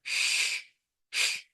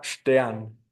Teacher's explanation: va a ser postalveolar es decir que haremos la fricción un poco anteriormente a donde tenemos nuestro alveolo con la punta de la lengua también y va a ser sorda es decir no requeriremos la vibración de las cuerdas vocales y · va a ser sorda es decir no requeriremos la vibración de las cuerdas vocales y esto tiene que sonar sh por ejemplo en la palabra